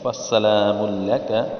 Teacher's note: سین کو سیٹی کی طرح بجائے